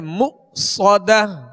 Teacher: اللاتی تطلع علی الافئدہ انہا علیہم مؤصدہ. یہاں حمزہ ساکن ہے، اس کو جھٹکے سے ادا کریں گے مؤصدہ. صاد کو سیٹی کی آواز میں اور پر پڑھیں گے مؤصدہ.